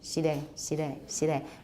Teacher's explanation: It's a tap. It's a lateral tap. Basically, it's an L. It's an L. So initial L in 闽南语 often ends up to be something like de, 西de, 西de, 西de.